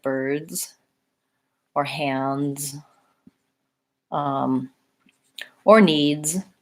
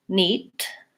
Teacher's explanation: what American speakers will do is they lengthen the vowel before the D that helps us perceive the D sound so rather than neat or needs I'm holding my vowel longer